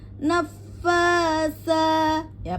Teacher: Karena pada fa bertasdid maka nadanya pada pengucapan pengucapan huruf f-nya harus dinaikkan ya. Harus dinaikkan, ditinggikan agar ada perbedaan dan mengeluarkan hak mustahak pada fa yang bertasdid.